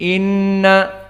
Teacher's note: Inna seperti itu dan dia harokatan tidak cepat Ina tetapi Inna dan makhrojnya harus dari khoisum dari hidung tidak dari jauh tidak dari bibir tidak dari kerongkongan maka dia mempunyai makhraj khusus makhraj sehingga jika kita tutup hidung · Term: gunnah